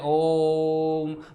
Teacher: ऐसे स्वर जिनके उच्चारण में लगभग 3 गुना समय लगता है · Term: प्लुत स्वर